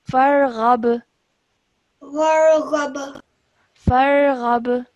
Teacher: because this ba is also one of the qalqala letters, and because it has a sukoon on it, then we would produce a slight jerk sound